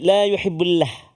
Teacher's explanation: Huruf Allah, kalimah Allah sebelum dia huruf ba yang berbaris dhammah, maka lafzul jalalah itu tebal. La, jangan baca tipis.